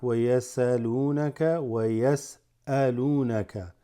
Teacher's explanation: There's like a slight pause on the hamza